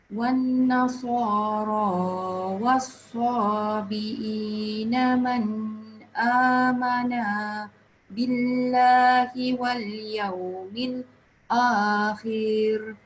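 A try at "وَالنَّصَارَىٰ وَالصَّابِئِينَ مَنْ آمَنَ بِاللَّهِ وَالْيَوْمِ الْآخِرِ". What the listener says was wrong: Ni khir dia tak boleh panjang. Wal yaumil akhir. Dia boleh panjang tak? Tak, saya nak tanya awak. Boleh panjang ke tak? Kalau gini, nampak tak? Hamzah dia in the middle of alif lam. Maknanya panjang ke pendek? Yes, panjang, betul.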